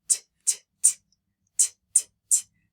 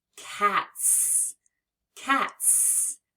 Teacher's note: the T is an unvoiced sound, which means when we add the S, we hear it as S